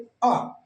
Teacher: जिनके उच्चारण में जीभ का मध्य बीच वाला भाग कार्यरत हो उसे मध्य स्वर कहते हैं।